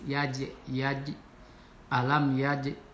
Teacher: Kemudian yaj ini qalqalah sugro. Jadi huruf qalqalah jim ini, tapi karena di tengah-tengah kalimat qalqalahnya qalqalah sugro. Jadi tipis.